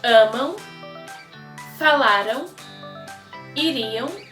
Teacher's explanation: When the A is followed by an M, especially as a verb ending, it also takes a nasal sound, very similar to the HUO or aung sound.